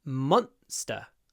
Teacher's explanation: When you say monster, try to make the m long and then the un really short because it comes before an unvoiced s. Monster.